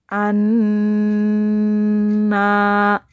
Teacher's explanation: jadi bacanya yaitu Nun nya itu Ditekan dan didengungkan selama dua harokat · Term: guna